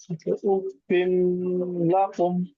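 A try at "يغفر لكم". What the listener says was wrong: হ্যাঁ ধরে রাখবেন না, উফিল লাকুম।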